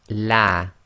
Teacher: we're going to pronounce the Lam of Allah in a light fashion, i.e. tarqiq